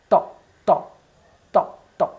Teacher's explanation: you have to touch the frontal two teeth almost fourth with the tip of the tongue top TA त, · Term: dental